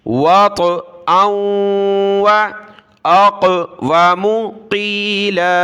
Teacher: यहाँ ता के ऊपर और यहाँ काफ पर कलकला हो रहा है